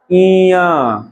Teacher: नाक का सहारा लेना पड़ रहा है और मुंह का भी